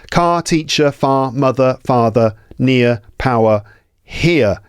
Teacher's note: So you heard that the R sounds weren't really pronounced.